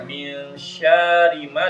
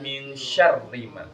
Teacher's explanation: Ro-nya bertasydid, jadi shinnya langsung ke huruf ro.